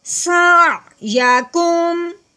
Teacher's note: ہاں جی، دوسری بات یہ ہم نے دیکھنی ہے میم ساکن جہاں ہوتا ہے آگے اگر با آ جائے تو میم ساکن پہ غنہ کرتے ہیں، جہاں پہ با نہیں ہے تو میم ساکن پہ غنہ بھی نہیں کریں گے